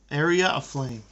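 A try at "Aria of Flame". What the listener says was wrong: That's twice now. That's twice that you called it Area of Flame. Yeah, Aria.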